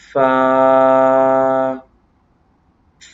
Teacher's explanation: یہ اوپر کے دانتوں کے کنارے اور نچلے ہونٹوں کے تر حصے سے ادا ہوگا.